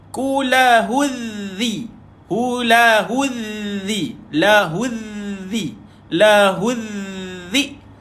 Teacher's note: Jumpa dengan zal, lidah sentuh gigi atas, bawah gigi atas.